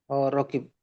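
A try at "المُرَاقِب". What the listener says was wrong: Murokib. Murokib. Murokib. Bukan rokib. Murokib.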